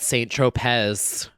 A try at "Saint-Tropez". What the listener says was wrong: Saint Tropez. You put the emphasis on the wrong syllable.